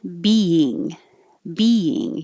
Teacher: you're putting your tongue in the e position which is very high e and then you're holding it there and making that same sound again · you don't have to chop it but you do have to make the e sound twice